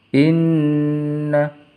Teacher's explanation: Inna, nunnya bertasdid harus dibaca dengung.